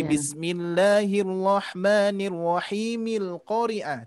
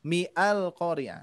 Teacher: hamzah wasal itu ketika diwasolkan dia menjadi hilang